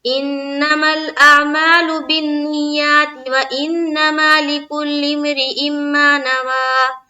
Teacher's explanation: تو حمزہ کا جو دو زیر ہے اس کو میم سے ہم ملائیں گے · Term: ادغام ناقص